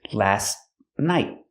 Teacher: The T in last is a stop T, but you don't really hear it because it's between consonants.